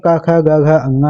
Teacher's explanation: कंठ में क ख ग घ अंगा आता है